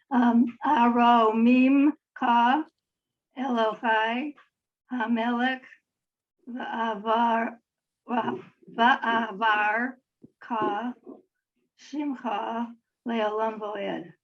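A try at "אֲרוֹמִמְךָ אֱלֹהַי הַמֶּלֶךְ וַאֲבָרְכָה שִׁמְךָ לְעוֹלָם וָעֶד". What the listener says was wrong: Very nice, nice job.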